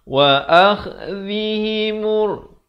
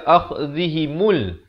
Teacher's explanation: Jangan baca akhdhihimul. Lam di sini silent, tak ada bunyi. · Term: alif lam syamsiah